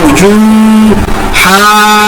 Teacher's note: دیکھیں میں نے مد کو 4 الف کے برابر لمبا کیا, اور یہاں پر واو مدہ کو صرف 1 الف کے برابر لمبا کیا, اور جیم شدہ کے اوپر میں نے تھوڑا سا جھٹکا دیا